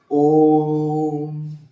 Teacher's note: ओम कहने में कहे ओम, यानी समय 3 गुना लग रहा है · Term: लुप्त स्वर